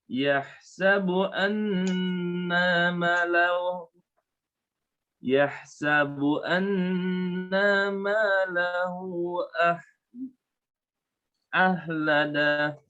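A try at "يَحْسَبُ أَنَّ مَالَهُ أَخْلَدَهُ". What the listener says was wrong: Nunnya jangan panjang, khanya jelaskan. Yahsabu anna malahu akhlada. Yahsabu anna malahu akhlada.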